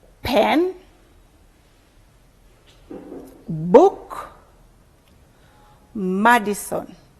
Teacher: The initial sounds are said with the lips pressed together. Therefore, they are known as bilabial sounds.